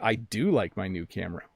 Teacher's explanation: so we emphasize the word do